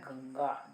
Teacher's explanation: अतः गंगा इति शब्दे अनुस्वारस्य स्थाने वर्गीयस्य अनुनासिकस्य उच्चारणं भवति। इसीलिए गंगा शब्द में अनुस्वार के स्थान पर उस वर्ग का, जिस वर्ग को ग बिलोंग कर रहा है, ग क वर्ग का है, तो क वर्ग का अनुनासिक का उच्चारण वहाँ पर होता है।